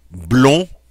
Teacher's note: notice I don't pronounce the D in the masculine, but once I put that E after it, that E makes it okay to pronounce that final consonant.